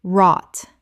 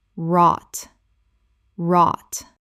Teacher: The w is silent. The gh is silent. It rhymes with caught and thought.